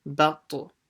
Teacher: the ba as usual, and then switches to heavy when you're saying the ta. Batu, sha, batu sha, making sure you don't stretch anything in between.